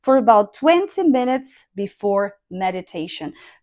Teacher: For sure my last word will be the final one and it'll have falling tone